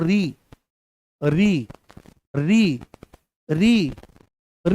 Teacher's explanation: जैसे ही बोलेंगे तो यह मूर्धा में महसूस होगा